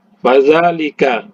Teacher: Fa ini berada di kedua belah bibir tapi gigi atas itu menyentuh bibir bawah